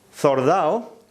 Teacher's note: la eliminación de la D en ADO